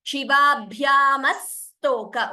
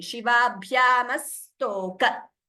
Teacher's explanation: Only sa is doubling. Ma is single. So we should not chant it as Shivabhyam Astok. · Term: dvitvam